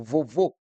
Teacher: a palavra vovô tem o último vô como sílaba tônica, que são palavras acentuadas.